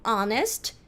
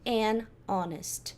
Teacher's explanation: isso daqui a gente fala honest, sem som desse H, então eu não vou falar a honest, eu vou falar an honest.